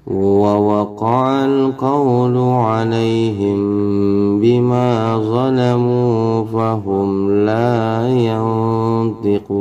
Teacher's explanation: mim sukun ketemu ba. Ingat ditahan juga 2 harokat teman-teman ya.